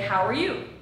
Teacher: the verb are is not stressed.